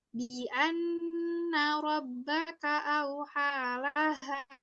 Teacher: ada nun bertasydid, itu namanya gunnah. Gunnah itu kita tahan dulu selama 2 harokat.